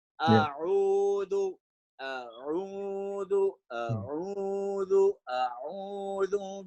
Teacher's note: you have to make sure a is from lower halaq, ain is from middle